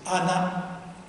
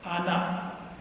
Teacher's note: the word for child is anak with the final glottal stop